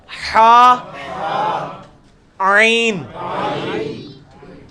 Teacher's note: وسط حلق سے نکلے گا